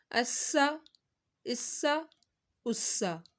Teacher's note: سین کی سیٹی نکالنی ہے